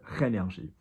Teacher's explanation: Your R is achieved by scraping the palate at the top of your mouth. Not R. We're not doing like perro or, you know, a sort of a doble R Spanish-Italian thing.